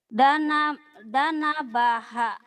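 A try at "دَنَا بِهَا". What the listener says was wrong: Panjang. Dana baha.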